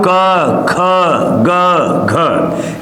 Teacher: जब मैं क ख ग घ बोल रहा हूं तो यह जो एयर निकल रही है वो कंठ से निकल रही है इसीलिए इस वर्ड को कंठ वर्ड या कंठ धुनिया कहा जाता